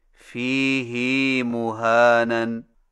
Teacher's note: فیہ کی ہا کو کچھ کھینچ کر پڑھیں، یعنی اس طرح فیہ مہانن۔